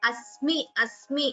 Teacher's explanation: Here, please do not prolong, do not chant it as me.